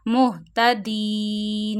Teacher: It means only the voice of noon will show here. And you can stretch letters of madda because of waqf sign up to three fingers here · Make noon sakin because of waqf.